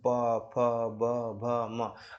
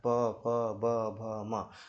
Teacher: प वर्ग का मेरे भाई ओष्ठ से होता है या होठ से होता है। जैसे प फ ब भ म आप खुद उच्चारित करके देखो मेरे साथ प भ म तो ये सब आपके होठों से उच्चारण हो रहे हैं।